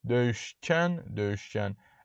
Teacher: kin, kün, kən şəkilçiləri kar samitlə bitən sözlərə qoşulduqda şəkilçidəki ki samiti c kimi tələffüz edilirdi